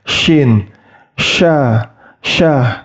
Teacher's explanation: Tengah lidah itu diangkat mendekati langit-langit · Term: huruf syin